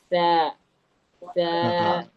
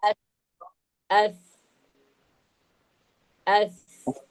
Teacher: നാവിന്റെ അറ്റം മേൽ മുൻപല്ലിന്റെ അറ്റത്ത് തട്ടുന്നു.